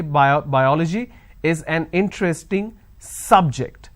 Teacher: I'm stressing on the first syllable. So I say biology is an interesting subject. I'm stressing on the first syllable.